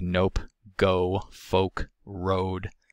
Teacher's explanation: and shorter in duration the next lower back vowel is o it is the higher of the mid back vowels it is tense and rounded · position that's found in stressed syllables or in word final syllables o is articulated by raising the jaw raising and retracting the tongue body but not as much as it is for uh or ooh pursing and protruding the lips plus the usual closure of the nasal passage and phonation in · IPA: /o/